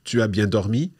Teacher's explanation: we raise our voice to turn the statement into a question